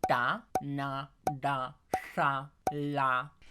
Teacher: todas estas consonantes lo que utilizan es la parte debajo de nuestra punta o de nuestro ápice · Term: retroflejas